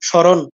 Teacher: ম কোথায় গেল ম বেহুশ হয়ে গেছে ম এক একদম হারিয়ে গেছে নাই বাংলায় বলি স্মরণ